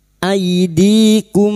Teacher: Di kasar bertemu ya sukun 2 harokat kita panjangkan mad tabi'i.